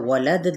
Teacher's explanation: علم، یہاں پر ادغام بغیر الغنہ، میم پہ اظہار شفوی، یا کلہا، یہاں پہ ادغام بغیر الغنہ، ہا پہ الف مدہ، ولد، دال پہ جب ہم وقف کریں گے وقف بالاسکان اور ساتھ ہی دال پہ قلقلہ بھی ہوگا